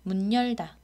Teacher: 문 다음에 여가 오니까 니은 첨가가 일어난 경우라고 하겠습니다.